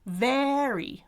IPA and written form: væri (very)